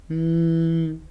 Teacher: the oral tract is blocked by Two Lips but the air passes through the nasal cavity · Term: nasal sounds